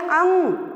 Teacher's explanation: अंग कहते हैं तो जहाँ का तहाँ ही रह जाता है, एक भी सांस बाहर नहीं निकलती, क्योंकि इसका उच्चारण जो है नाक से होता है। तो हम जब कहते हैं कि अंग, तो सांस बाहर निकलती ही नहीं है, जरा मरा सा थोड़ी बहुत निकलती है, ठीक है। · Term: अल्प प्राण